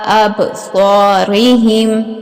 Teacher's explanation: یہاں پہ با جو ہے اس کے اوپر قلقلہ کیا جائے گا، با ساکن جہاں بھی آئے با ساکن ہو تو اس کے اوپر قلقلہ کیا جاتا ہے، صاد کو پر اور موٹا پڑھا جائے گا۔